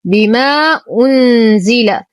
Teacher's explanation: نتم ضمة النون. بما أنزل، لدينا حرف مد وبعده الهمز في كلمتين، المد جائز منفصل، نعطي الإخفاء الحقيقي حقه.